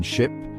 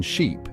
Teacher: The short I is quick and relaxed. The long I is more tense and your mouth is wider.